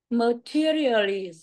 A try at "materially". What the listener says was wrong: Tại sao đằng sau chữ lì cái chữ sờ là sau ra chị Hằng? Nó không hề cái chữ sờ mà chị phát âm chữ sờ đó.